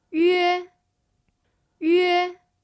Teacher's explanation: The first tone is a high-level tone.